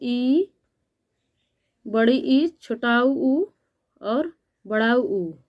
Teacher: संवृत यानी जिसको बोलने में लगभग मुख पूरा क्लोज रहता है यानी बंद रहता है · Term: संवृत स्वर